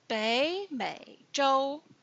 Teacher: Two third tones together in Bei and Mei. Bei becomes second tone.